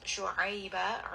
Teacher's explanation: Ain is going to be from the middle of the throat. You are going to feel a bit of constriction as you say this letter. Ba is going to be mad al-iwad.